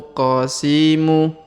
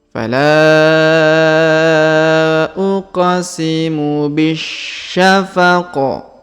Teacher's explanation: huruf q berharakat sukun maka kita pantulkan qis huruf Bi langsung sambung ke huruf Sya yang berharakat tasdid